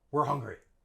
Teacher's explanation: And we don't say were. We use schwa.